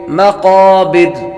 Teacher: قاف حروف مستعلیہ میں سے ہے، اس لیے اس کو پر کریں گے، اور را پر جو زبر ہے یہ وقف کریں گے تو یہ را ساکن ہو جائے گی۔